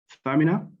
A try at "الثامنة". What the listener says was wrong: الثامنة. Eight with TH, as we say in English. Famina.